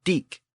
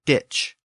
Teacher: The original Germanic word was diek, but in Old English, the K sound at the end shifted to a CH sound, and the word became ditch.